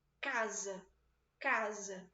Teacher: Tá vendo como é que o CA ele é muito mais alto do que o SA? Lembrando que esse S tem som de Z. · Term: sílaba tônica